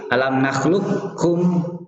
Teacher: Nakhluqukum langsung ke kaf, tapi nakis. Masih kelihatan qafnya, ada sifat qafnya isti'la. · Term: idghamnya nakis